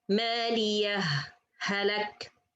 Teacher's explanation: Sect, I pause for a little bit without breath and then continue.